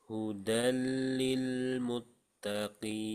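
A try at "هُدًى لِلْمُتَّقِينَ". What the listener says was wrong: Jadi jangan ditebalkan mut tapi muttaqin.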